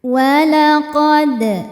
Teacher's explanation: Dal sukun hukumnya qalqalah sugro karena dalnya sukun asli dan ada di tengah bacaan ya, dibaca memantul dengan pantulan yang kecil.